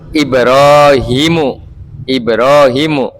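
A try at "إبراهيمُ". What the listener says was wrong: Salah Pak bacanya Pak. Salah bacanya. Panjang pendeknya antum salah. hanya pendek.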